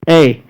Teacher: ए कंठ और तालू का मेल से ए बोला जाता है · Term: कंठ तालब